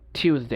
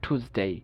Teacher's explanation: ব্রিটিশরা যেসব জায়গায় ইউ উচ্চারণ করে আমেরিকানরা ওইসব জায়গায় বলে উ